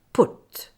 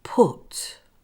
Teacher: If I don't use enough air, it sounds like, but and not put